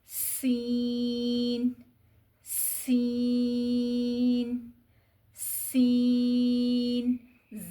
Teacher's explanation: طرف اللسان یعنی زبان کے کنارے جب اوپر کے دو دانت اور نیچے کے دو دانت کے درمیان میں آ جائیں اور سیٹی جیسی آواز پیدا ہو